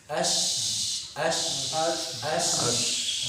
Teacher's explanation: Tafashi itu menyebarnya aliran suara di luar mulut.